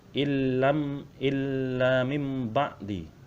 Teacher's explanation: Tulisannya illa min ba'di, tetapi cara membacanya illa mim ba'di. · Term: iklab